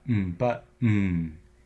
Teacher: that n is essentially the vowel in the second syllable of the word it's syllabic meaning it acts as the vowel at the heart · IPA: /n/